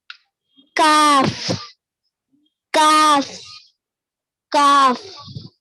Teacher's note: इसको हम पुर पढ़ेंगे यानी हैवी आवाज में पढ़ेंगे